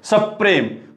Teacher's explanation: ह्या जोडाक्षराचा आघात या आधीच्या स वर पडलेला आहे